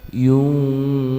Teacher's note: Membaca ikhfa adalah nun sukun dengan bibir langsung masuk ke huruf fa. Jadi membaca iu-nya tidak boleh berubah langsung ke huruf fa.